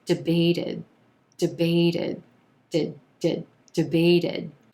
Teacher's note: when i add the past tensed ed ending on that word that final t becomes a flap t and it sounds like debated did debated congress debated for hours